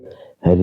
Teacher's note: मूर्धा से री का उच्चारण होता है